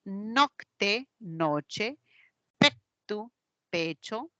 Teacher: nivel fonológico sería una K más t evolucionó a una ch esta Che se conoce a nivel fonológico con su definición una africada palatal